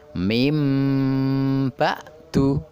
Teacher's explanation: nun bertemu dengan huruf ba kemudian akan berubah menjadi huruf mim, ditekan 2 harokat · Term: iklab